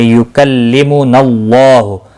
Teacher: اللہ کا لام زبر کی وجہ سے پر ہوگا، اس کے اوپر کھڑی زبر بھی ہے، ایک الف کے برابر کھینچ کر پڑھیں گے، ہو کو کھینچنا نہیں۔